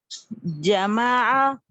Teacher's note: देखिए जमा जिम में चे की आवाज ना है